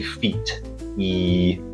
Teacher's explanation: when you say feet, your tongue is a much more forward position. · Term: front vowels